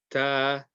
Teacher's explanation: tip of the tongue touching between the gums and the top teeth